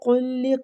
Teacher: قاف بھی مستعلیہ حروف ہے، اس کو بھی پر پڑھیں گے